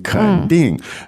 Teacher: Third tone, fourth tone